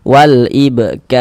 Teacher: Kalau di sini ada huruf ro sukun, sebelumnya di sini ada tanda baca fathah ini, maka huruf ro sukunnya kita baca tafkhim, kita baca tebal. Kita tebalkan huruf ro-nya.